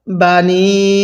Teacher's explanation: এই নুনের মধ্যে আমরা ৩ আলিফ টান দিব, কারণ এরকম চিকন চিহ্নের পরে যদি এরকম লম্বা হামজা থাকে তাহলে সেখানে আমাদের ৩ আলিফ টানতে হয়।